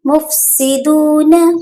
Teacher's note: أَلَا إِنَّهُمْ، again نون مشدد آواز ناک میں چرائیں گے، انہم هم المفسدون، سین میں باریک سیٹی کی آواز